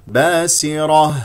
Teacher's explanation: الميم با سر السين مكسوره اكسرها جيدا والراء مفخمه لانها مفتوحه ونقف على ها ساكنه مهموسه